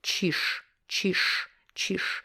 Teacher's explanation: here, чиж ends with zh, but when we pronounce it, we use sh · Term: devoiced